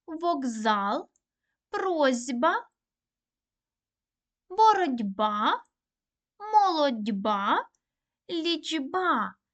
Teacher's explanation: глухі приголосні перед дзвінкими вимовляють дзвінко